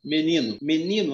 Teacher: Menino, a sílaba mais forte é o ni.